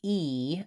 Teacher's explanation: when I'm saying /i/, I want to make sure I really have a nice tense high tongue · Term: tense vowel